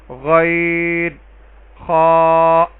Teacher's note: یہ دونوں حروف موٹے پڑھے جانے والے حروف ہیں, ان کو حروف مستعلیہ کہتے ہیں. یہ ادنا حلق یعنی حلق کے ابتدائی حصے یعنی منہ کی طرف والے حصے سے ان کی ادائیگی ہوگی, جہاں سے زبان کی شروعات ہوتی ہے, زبان کی جڑ سے تھوڑا سا پہلے گلے سے یہ دونوں حروف ادا ہوتے ہیں.